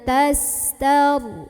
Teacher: Huruf ta ini makhrajnya dekat dengan nun, sehingga ini samarnya lebih besar ya. Jadi cara membunyikan ikhfa ini adalah nun sukunnya disamarkan menuju huruf ta. Samar dan dengung.